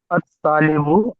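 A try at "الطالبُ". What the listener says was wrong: अत-तालिबु चलेगा, वैसे ही है, सही फरमाया आपने।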